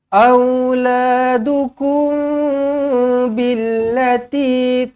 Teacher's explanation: mim kosong bertemu dengan ba, ikhfa syafawi, dengungkan dengan 2 harokat.